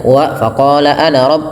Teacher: setiap lafal ana di dalam Al-Quran itu tidak dibaca panjang. Jadi bacanya wa faqala ana rabb, pendek.